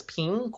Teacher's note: same and then ping in in Apple Apple is pink or that's the second tone that goes up rising